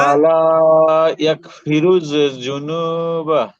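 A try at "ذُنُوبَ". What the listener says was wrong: হ্যাঁ জুনু না, জাল জাল নরম, জুনুবা। হ্যাঁ এটা এটা একটু ঠিক করতে ভাই, ঠিক আছে পড়া ঠিক আছে, বাকি জালটা নরম হবে।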